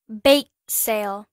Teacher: từ bake sale là danh từ ghép, chúng ta sẽ nhấn vào từ bake